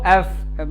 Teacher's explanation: উপরের দাঁত নিচের ঠোঁটের মধ্যে লাগিয়ে রাখবা এবং দাঁতের ভেতর দিয়ে একটা বাতাস বের হবে